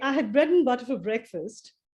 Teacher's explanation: You say butter, bread, and breakfast is stressed. The rest I had, for, and all these things are not stressed.